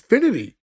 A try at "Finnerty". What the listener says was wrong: Finnerty. Because you're thinking of like infinity, but it's Finnerty.